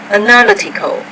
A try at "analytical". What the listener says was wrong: No, analytical, academic. So more word stress issues. I think that we found something that you can work on. It's word stress.